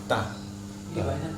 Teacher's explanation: ta ujung lidah dengan pangkal gigi seri bagian atas. Ta. Ini gigi seri, ini pangkalnya ta.